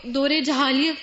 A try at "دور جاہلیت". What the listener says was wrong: یہ لفظ جاہلیت ہے، جہالیت نہیں ہوتا، سب اپنا پروننسیشن ٹھیک کر لیں، کیونکہ ہم بہت سے لفظ کتابوں سے جب پڑھتے ہیں تو صحیح نہیں پڑھتے۔ دور جاہلیت، ٹھیک ہے، پھر پڑھیے آپ۔